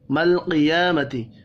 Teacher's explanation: قاف حروف مستعلیہ ہے، پر پڑھیں گے. یا کے اوپر کھڑی زبر ہے، ایک الف کے برابر کھینچ کر پڑھنا ہے.